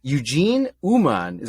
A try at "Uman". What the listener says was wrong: I pronounce it Uman, U-M-A-N, Without the H.